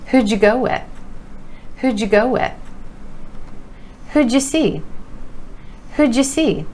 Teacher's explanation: our word you is reducing to ya, and the Y sound is changing to ja, that J sound